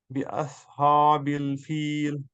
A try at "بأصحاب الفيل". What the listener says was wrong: بأصحاب الحا سے, اصحاب, ذرا پڑھیے بأصحاب